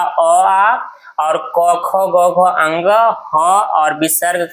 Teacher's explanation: अ आ और क ख ग घ अंग ह और विसर्ग का जो है उच्चारण स्थान कहाँ से होता है? कंठ से। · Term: कंठ वर्ण